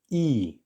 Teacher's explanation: you can actually think of this Russian letter E as being halfway between a double E sound in English and an I